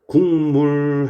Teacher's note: 비음이 아닌 놈이 비음으로 변화돼 버리죠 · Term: 비음화